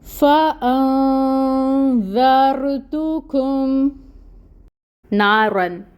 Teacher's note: فَأَنذَرْتُكُمْ نَارًا، یہاں پر الف ساکن ہے اور اس سے پہلے نون کے اوپر زبر کی حرکت ہے، الف مد کا رول ہو رہا ہے، 2 حرکت کے برابر لمبا کریں گے نا کو